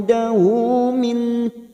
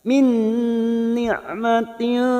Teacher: nun sukun bertemu nun idgham bi gunnah siap masuk pada huruf nun berikutnya dan ditahan selama 3 harakat